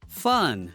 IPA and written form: fʌn (fun)